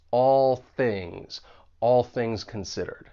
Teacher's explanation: And then you move right in to that voiceless th in things because the tip of your tongue is going to be behind your top front teeth. And it's like we can just connect those two words. · And with this phrase, the only thing that I'd like to point out is that there's a bit of co-articulation going on with that final dark L and all, and then you move right into that voiceless TH in things, because the tip of your tongue is going to be behind your top front teeth